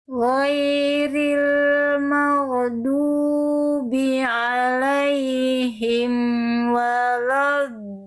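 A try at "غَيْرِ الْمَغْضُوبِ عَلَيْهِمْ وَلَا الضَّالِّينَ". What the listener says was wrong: Oke, PR-nya di huruf ghain sukun sama huruf dod kurang tebal. Ya, pangkal lidahnya kurang diangkat.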